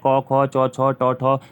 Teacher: हवा बिना स्वर तंत्रियों से टकराए बाहर आती है, इसमें अघोष है